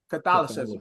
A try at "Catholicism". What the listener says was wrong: Yeah, but you're not saying Catholicism. It's the It's the TIK you have the issue with.